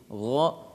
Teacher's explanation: makhraj ghain ini di ujung tenggorokan